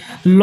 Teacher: जिसके उच्चारण में हवा जीभ के पारश्व यानी बगल से निकल जाए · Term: पार्श्विक व्यंजन